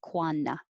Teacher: We don't have to say that T, quanta. We can say quanna. Both are correct.